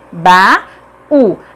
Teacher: a segunda vogal do hiato é U, é tônico e está sozinho na sílaba, portanto, é acentuada.